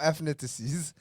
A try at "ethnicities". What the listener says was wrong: let's really say there's no F in it.